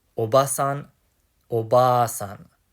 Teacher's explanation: Notice that with oba-san, we extend the a vowel sound for an extra syllable. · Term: long a